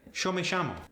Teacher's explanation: A native Spanish speaker from Argentina replaces SH a lot for the Y sound. For instance, yo me llamo becomes Yo me llamo.